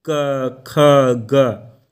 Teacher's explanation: जिह्वा मूल मतलब जीभ के मूल भाग से होता है, मतलब जीभ के किनारे से होता है, जैसे क, ख, ग।